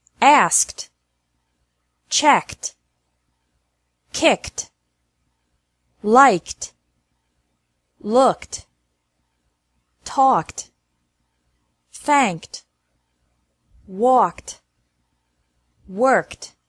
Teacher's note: ED is pronounced like T after verbs ending with a K sound.